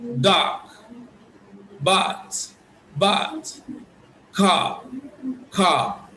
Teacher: you ensure that the sound is produced in the middle of your mouth in the middle of the oral cavity